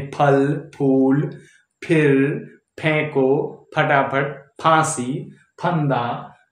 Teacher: फ यानी होंठ सटे होते हैं आपस में। फ जब बोलते हैं तो होंठ आपस में सटे होते हैं, यानी फल, फूल, फिर, फेंको, फटाफट, फांसी, फंदा।